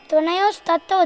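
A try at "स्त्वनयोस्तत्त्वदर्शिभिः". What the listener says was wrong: It's not tvanay, tvana. Tvana, tva.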